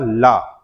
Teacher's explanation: ला का उच्चारण करते समय वायु जीभ और तालु का स्पर्श करके इनके पास से निकलती है, इसलिए जो हमारा वर्ण है बेटा कौन सा, ला, वह इकलौता पार्श्विक व्यंजन है।